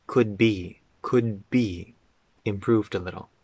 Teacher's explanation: The D and the B connect.